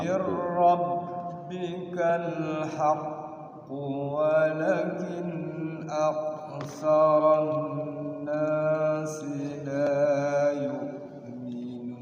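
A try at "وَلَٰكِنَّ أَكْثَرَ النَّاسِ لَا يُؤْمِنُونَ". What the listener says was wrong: Awas, la-nya panjang 2 harokat. Walakinna, nanya digunakan hidup. La walakinna aktsaran nasi la yu'minun.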